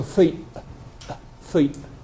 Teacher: modern fleece is really a diphthong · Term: diphthong shift